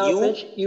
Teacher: ইয়া পেশ যেন উ হামজার মতো উ না হয়